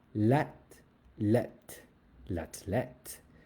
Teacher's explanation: TH in French does not go th. It just makes a t sound.